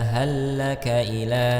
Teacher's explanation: Nah, di sini terdapat hukum idgham mislain ya, atau mutamathilain ya, dua huruf yang sama bertemu ya, huruf lam kemudian bertemu lagi huruf lam ya, maka langsung dijadikan satu ya, dileburkan, akan disebut dengan idgham